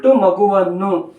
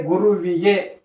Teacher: ಅನ್ನುವಂತಹ ಶಬ್ದದಲ್ಲಿ ಉ ಅನ್ನುವಂತಹ ಸ್ವರ ಐತಿ ಅದರ ಮುಂದುಗಡೆ ಅನ್ನುವಂತಹ ಸ್ವರ ಬಂದೈತಿ ಸಂಧಿ ಕಾರ್ಯ ನಡೆದಾಗ ವ ಅನ್ನುವಂತಹ ವ್ಯಂಜನ ಬಂದೈತಿ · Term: ವಕಾರಾಗಮ ಸಂಧಿ